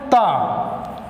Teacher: तो अब फिर से देखिए दंत वाले में जिन व्यंजनों का उच्चारण क्या हो, दांत की सहायता से हो, ठीक है, इसमें जीभ की नोक ऊपरी दांत की पंक्ति का स्पर्श करती हो, मतलब ये जो जीभ है ये दांत के क्या करेगी, ऊपरी भाग को क्या करे, स्पर्श करे। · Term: दंत व्यंजन